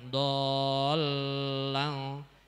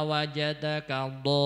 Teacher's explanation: Kemudian ketika wa wajadaka dhol, ketika nggon lamnya jangan lama-lama, dholang, jangan dholang, itu tasdidnya kelamaan. Sing panjang ketika di dhonya saja.